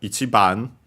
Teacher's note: Accented before ban itself.